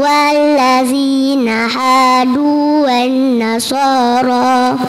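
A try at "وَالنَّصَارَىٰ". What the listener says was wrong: Bunyinya kurang panjang. Walladzina hadu wan-nasara. Wan-nasara.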